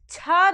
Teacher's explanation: छ का उच्चारण स्थान क्या होता है तालव्य छ को हम संघर्षी व्यंजन भी बोलते हैं क्योंकि इन वर्णों